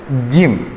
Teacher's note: Huruf jim itu sesungguhnya tidak boleh terlalu hames, tidak boleh terlalu banyak udara yang keluar. Jadi bukan ji ju baj, bukan gitu.